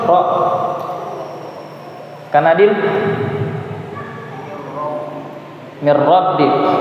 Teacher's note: huruf nun ketika bertemu dengan ra tidak boleh dibaca dengung, akan tetapi dibaca tanpa dengung